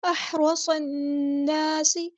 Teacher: نون پہ غنہ زمانی ہو رہا ہے، ایک الف کے برابر رکیں گے · صاد کو ہم نے نون کے ساتھ ملا دینا ہے، حمزۃ الوصل ہمارا ڈراپ ہو جائے گا، یعنی ہم اس کو نہیں پڑھیں گے. اور لام جو ہے وہ لام شمسی ہے تو اس کو بھی ہم نہیں پڑھیں گے.